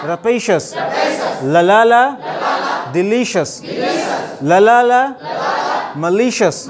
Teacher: second syllable पे stress है